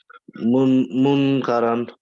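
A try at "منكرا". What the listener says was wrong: No, don't say the noon. Munkaram, not mun. If you say mun, if you say mun, it becomes like izhar. You're reading it. You're reading the noon clear. We have to hide the noon sound of the noon. Munkaram.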